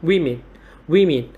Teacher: trọng âm rơi vào âm tiết thứ nhất và cái nguyên âm của âm tiết thứ nhất Chúng ta